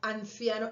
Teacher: en mi dialecto, esa N ya la estoy pronunciando entre los dientes